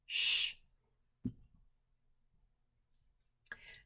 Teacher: In order to make the sh sound, your teeth will meet in the middle, and your lips will be round, and you'll have some air that comes out when you make that sound